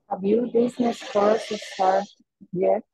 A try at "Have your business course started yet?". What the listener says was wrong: Just this, the T sound in this, because it should be ED.